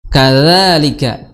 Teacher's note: Sudah kita singgung tadi makhraj kaf, kemudian zal seperti huruf sa, ya. Ujung lidah bertemu dengan ujung gigi seri atas.